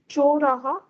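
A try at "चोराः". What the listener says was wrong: Slowly, you have to repeat that correct accurately. See, when you said choraha, it sounds like hriswa. Isn't it raha? So can you go a little more clear?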